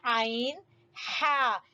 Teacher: عین ہا گلے کے درمیان کے حصے سے عین ہا ادا ہوں گے